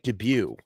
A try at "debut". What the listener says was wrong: That's phonetically, but debut. Yeah, the T is silent.